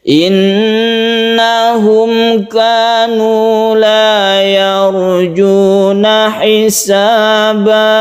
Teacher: Dipanjangkan karena dia gunnah musyaddada, nun yang bertasydid.